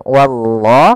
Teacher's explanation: pada lafal Allah di sini lam tebal lafzul jalalah lamnya tebal